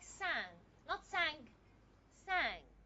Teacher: it's a velar nasal, because the ing is a velar sound. · Nasal, because the nasal cavity is open, as in words just like sang, not sang, sang. There's no ga sound.